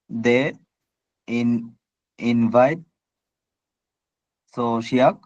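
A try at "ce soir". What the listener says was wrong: শিয়া, শিয়া মানে কুকুর, শিয়া না, এটা সোয়া,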